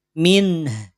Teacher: Min nunnya jelas dibaca izhar Min tidak min min tidak perlu ditahan cukup satu harakatah lanjut